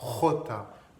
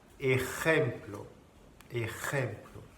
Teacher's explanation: Alors ça, pour prononcer la jota, c'est ici que ça se passe, d'accord? C'est comme un R, mais plus profond.